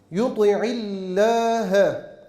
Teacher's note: lafzatullah'ın lamı ince teşdit bila gunne Meddi tabii deriz